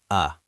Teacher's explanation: The schwa is the lazy sound of English. It sounds like uh it is the most common sound in the language.